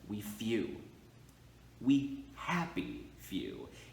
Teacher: few is going to be that stressed syllable so we is going to stay in that unstressed spot